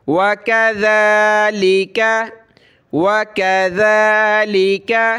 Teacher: دال کھڑا زبر ذا، زبان نکالی جاتی ہے اس پہ